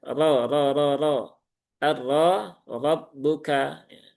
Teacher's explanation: roknya berharokat fathah berarti dia dibaca dengan tafkhim ya